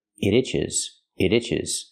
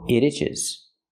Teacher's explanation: When I link the sounds and say it together, it itches, it itches. You hear the T in it pronounced as a fast D.